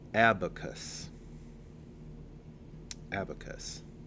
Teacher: Third syllable cuss rhymes with us. The stress is on the first syllable. · Second syllable uh short unstressed vowel sound. · First syllable, ab, like the beginning of absolute. Second syllable, short, unstressed vowel sound. Third syllable, cuss, rhymes with us.